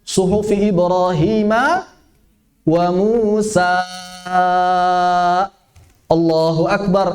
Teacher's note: Itu namanya mad arid lirruku'. Madnya dipanjangkan lebih dari 2 harokat gara-gara mau ruku'. Nggak ada di tajwid.